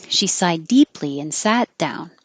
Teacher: don't release your d from side deeply that would make extra choppy she sighed deeply and sat down hold it there she sighed